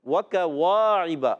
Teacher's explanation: کاف باریک ادا ہوتا ہے، زبان کی جڑ اور تالو کا سخت حصہ، یہ کاف کا مخرج ہے